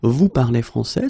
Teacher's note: we can keep the same order, we just need to raise the voice at the end